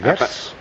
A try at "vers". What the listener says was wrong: On dit pas verse.